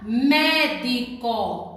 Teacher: a palavra médico, a sílaba mais forte é o mé, a antepenúltima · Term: proparoxítona